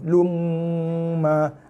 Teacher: Lum ini masuk dalam mim, tekan dan dengung 2 harakat. Lepas tu lepaskan dengan baris mim.